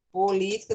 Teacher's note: proparoxítona ou seja a sílaba mais forte ela é a antepenúltima